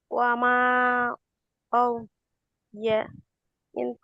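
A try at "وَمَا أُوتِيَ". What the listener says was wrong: আও না, ওয়ামা উ, হামজা ওয়াও পেশ, উ, মাদ পড়েছিলাম আমরা। এখানে পেশের বাম পাশে জজমালা ওয়াও আছে। উ, এক আলিফ টেনে পড়তে হবে। ওয়ামা উতিয়া, উতিয়া।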